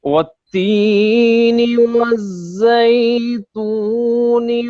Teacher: یہ والتین میں لام نہیں پڑھا گیا تو لام تعریف ہے. · یہ حروف شمسی ہے جس کی وجہ سے لام کا ادغام ہو گیا ہے